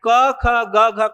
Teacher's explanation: क ख ग घ का उच्चारण कंठ से होता है